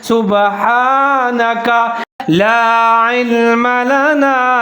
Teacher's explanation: काफ के ऊपर ज़बर है, काफ को बारीक पढ़ना है